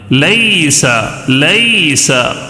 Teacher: یا ساکن سے پہلے زبر ہو تو یائے لین۔ پڑھنے کا طریقہ کیسا ہے؟ نرم آواز کے ساتھ جلدی پڑھنا ہے،